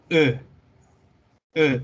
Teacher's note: Es un sonido en que está entre una E del español y una O del español, pero no es E y tampoco es O.